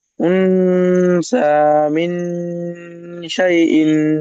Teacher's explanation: নুন সেকেন্ডের, নুন সেকেন্ডের পরে হরফে ইফার 15টি অক্ষরের মধ্যে শিন এসেছে, তাই নুন সাকিনকে এক আলিফ গুন্না নাকে তুলে পড়তে হবে